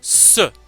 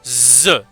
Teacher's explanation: Fricative sourde, dentale, S. Fricative sonore, dentale, Z.